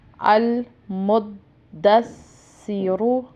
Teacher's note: را سیدہ پیش رو، را کے اوپر پیش ہے اس وجہ سے اس کو بھی پر پڑھیں گے۔ یہ رول ہے کہ را کے اوپر زبر یا پیش ہو تو اس کو پر پڑھتے ہیں، یعنی موٹا پڑھتے ہیں، موٹی آواز سے پڑھتے ہیں۔